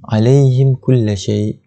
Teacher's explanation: Dijelaskan bunyi mim itu, tidak perlu dengung, tidak perlu panjang. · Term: izhar syafawi